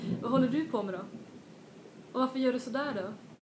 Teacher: when I pronounce this fast, the D becomes almost like an R.